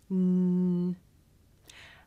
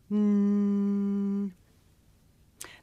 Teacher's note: make this sound with the tongue behind the teeth mmm and when you make this sound you should be able to feel a vibration in your nose